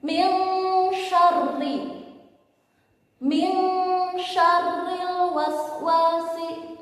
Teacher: Karena bertemu dengan shin, nunnya harus dibaca dengung